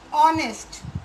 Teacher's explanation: the H is silent here and we are stressing with O, vowel sound